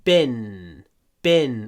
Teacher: Попробуйте держать н. Н это самый длинный звук в этом слове.